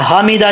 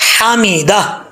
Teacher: یہ ہا بریک ہے، اس کا تعلق حلق سے ہے، اس کو بریک پڑھنا ہے. حمیدہ نہیں پڑھنا، یہ اکثر لوگ کی مسٹیک ہے، حمیدہ ایسے نہیں، حمیدہ.